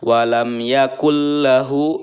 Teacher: ya huruf idgam bilagunnah itu ada dua yaitu lam dan ro Apabila ada nun bertemu dengan huruf lam maka membacanya harus memasukkan serta tidak mendengung · cool nah memasukkan dari huruf Kaf ke dalam huruf lam ya Nun nya tidak terbaca kemudian tidak disertai dengan dengungan Ya hanya idgham saja walam Yakul lahu walam Yakul lahu Ya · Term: idgham bilagunnah